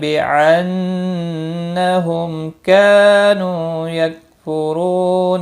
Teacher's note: میم ساکن کے بعد کیف آیا ہے، اظہار شفی ہوگا